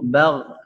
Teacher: Gha ini ketika sukun ingat tidak boleh dipantulkan karena bukan huruf qalqalah, huruf yang memantul